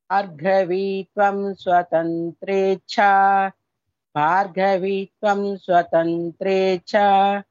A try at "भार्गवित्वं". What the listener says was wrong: not vitvam, it is not dirghakshara, va is rasvakshara, v, that's it, v. Bhargavitvam swatantrecha भार्गवित्वं स्वतन्त्रेच्छा भार्गवित्वं स्वतन्त्रेच्छा वशीकृतजगत्पतिः